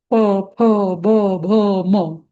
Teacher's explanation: नंतर त थ द ध न तिथे दातांची मदत लागते, जीभ आपली दातांना आघात देते, त थ द ध न. नंतर प फ ब भ म प वर्ग जो आहे त्याला ओठांची मदत, ओठ मिटतात, बरोबर. प फ ब भ म. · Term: ओष्ठ्य